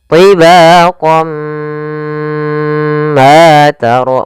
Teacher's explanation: Naqis itu berarti tidak terlalu sempurna masukannya, masih ada sedikit sisa-sisa suara tanwinnya atau suara nunnya. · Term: idgham bi gunnah